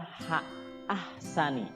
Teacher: Nah, di situ haknya hak kecil, ya, bukan hak besar yang ada di dada, tapi hak kecil. Kayak capek gitu, ya.